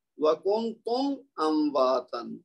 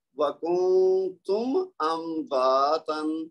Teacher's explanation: اب میم کو لمبا نہیں کریں گے، میم کی آواز کو ظاہر کریں گے اور اگلا حرف اپنی حرکت کے ساتھ الگ سے پڑھیں گے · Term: اظہار شفوی, اظہار